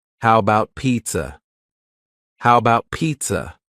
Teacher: The first A in the word about is gone. It's just missing. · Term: reduction